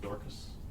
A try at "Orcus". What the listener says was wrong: It's pronounced Orcus, but yeah, the D is silent.